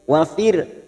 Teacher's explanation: ra sukun yang didahului kasrah kita baca tarkik tipis